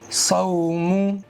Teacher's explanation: صاد کو موٹا کر کے پڑھنا چاہیے، منہ کے اندر ہوا بھر کے زبان کو اوپر کے تالو کی طرف اٹھاتے ہوئے صاد کو ادا کرنا چاہیے، کیونکہ صاد کے اندر اطباق کی صفت ہے، استعلاء کی صفت ہے، موٹا کر کے پڑھنا چاہیے۔